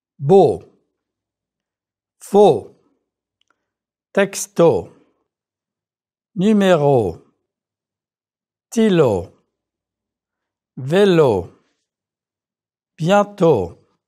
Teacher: Shorten the word to go, checking that your lips protrude. O is a very clean sound in French. Make sure that you don't let that W sneak in. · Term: French closed O sound